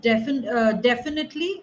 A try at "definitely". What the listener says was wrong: Both of them have to be narrower sound, not a.